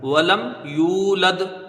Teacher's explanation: یا وا پیش یو، یہاں واو مدہ ہے، اس کو ایک الف کی مقدار کھینچ کے پڑھا جائے گا